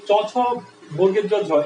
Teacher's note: জিভটা যায় দেখো তালুতে লাগে, দেখো দাঁতের একটু পেছনেই লাগে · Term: তালেব্য ধ্বনি